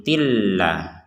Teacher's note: Dimasukkan dulu tanwin yang tin ini masukkan ke la sehingga menjadi tilla. Ya, jadi yang awalnya tin la dimasukkan ini kepada la menjadi tilla. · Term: idgham bila gunnah